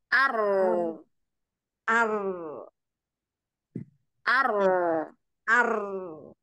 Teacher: itu dalam posisi sukun maupun tasdid ya maka pangkal lidah ya pangkal lidahnya itu karena dia mau rnya tebal jadi dia tetap naik jangan pangkal lidahnya di ditarik pelan-pelan gitu enggak kalau ditarik pelan-pelan